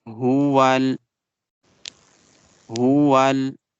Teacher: This is ha from bottom part of the throat.